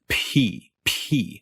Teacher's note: aspiration p is an aspirated consonant and to be really precise the aspiration happens in that tenth of a second between when your lips pop open and the vowel e starts p p it's when you're making that that h-like sound and